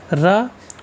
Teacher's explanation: रा को तर्ष लुंठित सघोष अल्प प्राण व्यंजन की संज्ञा दी गई है